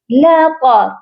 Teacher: طا کو جو ہے موٹا کر کے پڑھا جائے گا، لَطَا باریک نہیں پڑھنا